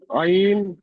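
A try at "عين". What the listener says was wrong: টান হয়নি। আইন 3 আলিফ পরিমাণ টান দেন, 1 আলিফ নয়।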